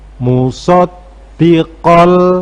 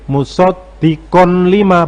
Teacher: maka kon itu berubah menjadi kol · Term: idgham bila gunnah